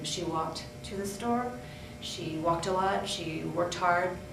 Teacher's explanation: putting on that final t sound at the end of regular verbs